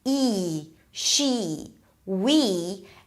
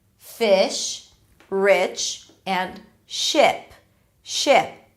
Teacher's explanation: So one is more tense, E, she, we, and one is relaxed, actually going closer to an E sound, fish, rich, and ship.